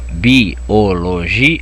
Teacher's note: A tonicidade está no G. É a segunda sílaba de trás para frente, é uma palavra paroxítona.